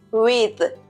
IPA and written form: wɪð (साथ)